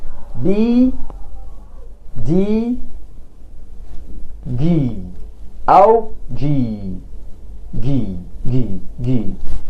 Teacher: بيعملوا اهتزاز للاحبال الصوتيه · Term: voiced sounds